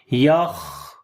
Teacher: خا کو موٹا پڑھیں گے اور خا کے اوپر صفت ہمس آئے گی